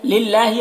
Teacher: अल्लाह के लाम को बारीक पढ़ेंगे, खड़ा ज़बर है, एक अलिफ के बराबर खींचेंगे।